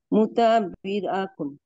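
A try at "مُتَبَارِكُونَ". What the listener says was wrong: না, মুতাবা, না, বায়ে জবর থাকবে, রয়ে জের হয়ে যাবে। মুতাবারিকুন। মুতাবারিকুন। হ্যাঁ, মুতাবারিকুন। মুতাবারিকুন। হ্যাঁ, এভাবে মুতাবারিকু।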